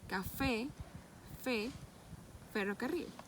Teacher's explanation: sale por la cavidad bucal la vía dental sordo fonéticamente y el labio inferior se aproximan los incisivos superiores formando entre ambos una estrechez por donde discurre el aire aparece este modo en cualquier posición de la cadena sónica y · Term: Labio dental sordo